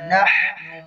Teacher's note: حا کی ادائیگی وسط حلق سے ہوتی ہے